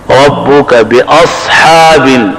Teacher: ربک باصحاب, حمزہ سخت اور صاد موٹا. اب اگر یہاں صاد کے بجائے سین ہو تو لحن جلی, خطرناک غلطی ہوگی, اس لیے یہاں غلطی سے بچنا چاہیے.